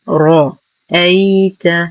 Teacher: لدينا يا ساكنة ما قبلها مفتوح فهو حرف لين، زمنه ما دون الطبيعي وصلا